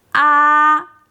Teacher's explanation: relax your throat and pronounce first tone ā steadily at a high pitch · First tone is a high and steady flat tone. It's a base of all 4 tones, so don't take it lightly.